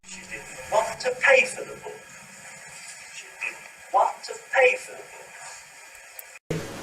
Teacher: I've chosen to make did sentence stressed, want sentence stressed, pay sentence stressed, and book sentence stressed.